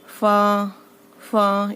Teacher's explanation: ऊपर के सामने के दो दांतों का किनारा और नीचे के होठ का गीला हिस्सा। सूखे हिस्से को मत लगाना।